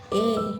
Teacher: dihasilkan dengan menggerakkan bagian depan dan belakang lidah ke arah langit-langit sehingga terbentuk ruang rional antara tengah lidah dan langit langit misalnya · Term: vokal sedang